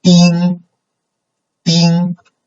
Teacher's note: flight so it's kind of level this kind of level uh the beginning point and ending point they are on the same level so it's very high and flat